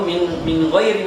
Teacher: Nun dia keluarnya di ujung lidah, ya. Sedangkan 6 huruf ini keluarnya di tenggorokan, maka sangat jauh, ya. Makanya kalau kita mau baca idgham misalnya, ya, mi ghairi atau min ghairi misalnya, kita baca mi ghairi, ini sangat berat. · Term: idhar